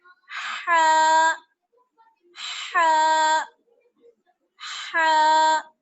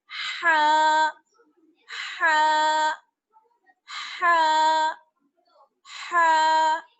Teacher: हा वो अदा होती है हलक के बीच वाले हिस्से से, हलक का बीच वाला हिस्सा